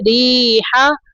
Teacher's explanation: را کے نیچے زیر ہے تو را کو باریک پڑھیں گے